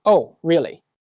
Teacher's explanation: It was sarcastic or disbelieving because my voice dropped at the end.